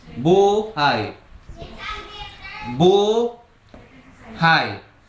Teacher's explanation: Magkatabi pa rin ang a at saka Y sa makatuwid Ang buhay ay may diptonggong a at y